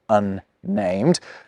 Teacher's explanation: The double N in unnamed is fine, because you hear 2 N's